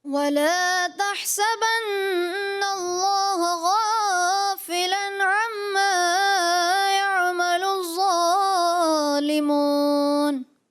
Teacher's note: جی تھوڑا سا غنہ اور واو کی ادائیگی کمزور محسوس ہوئی